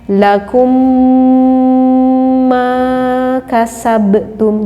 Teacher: membacanya tidak cukup di idghomkan saja tambah didengungkan sehingga membacanya seperti ini lagu meccas abtub jadi minimnya mendengung tidak · ada mim yang bertasjid, sehingga membacanya tidak cukup diidghamkan saja, tambah didengungkan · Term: ghunnah musyaddadah, mimnya mendengung